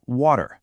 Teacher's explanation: An American will typically say water, smoothing out that T into a D sound